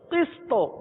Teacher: کیونکہ آخر میں تو ہے تو ساکن پہ قلقلہ ادا ہوتا ہے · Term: قلقلہ صغرا